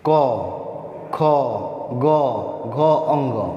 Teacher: क वर्ग है, इसका उच्चारण स्थान कंठ से है।